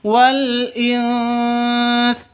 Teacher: nun mati bertemu dengan Sin ini ikhfa Hakiki samar disertai dengung siap-siap ke huruf sinnya Jadi kalau di sini siap-siap ke huruf